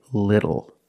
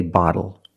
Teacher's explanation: when you see tle or ttle phonetically the t is between vowels and for this reason the T changes to a fast D in American pronunciation